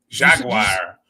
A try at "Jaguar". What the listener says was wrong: Jaguar. It's Jaguar, not Jaguar. It's Jaguar. War. There's no wire in there. It'd be WIRE if it was Jaguar.